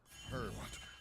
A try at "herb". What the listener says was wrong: No, you don't pronounce the H. It's herb.